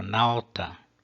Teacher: nós temos também a primeira sílaba longa por natureza porque ela contém um ditongo e portanto é longa por natureza a terceira palavra nome também